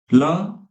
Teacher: दंत है इसको दांतो के स्पर्श से बोला जाता है